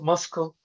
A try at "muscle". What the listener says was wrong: It's muscle. The C is silent.